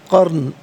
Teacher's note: را ساکن ما قبل کاف پر زبر، را ساکن کو پر کر کے پڑھا جائے گا